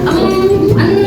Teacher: Ghunnah itu dengung. Jadi dibacanya dengung yang ditahan.